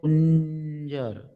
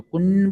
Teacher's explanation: અનુભવ થાય કે અંજ બોલતી વખતે આપણે નાકમાંથી ધ્વનિ નીકળશે, બરાબર છે. મોઢું તો આપણું અંગ બોલો તો મોઢું તો ખુલ્લું રહેશે જ, પણ નાકની અંદરથી ધ્વનિ નીકળશે, બરાબર. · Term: અનુનાસિક